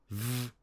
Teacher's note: V is a voiced labiodental fricative.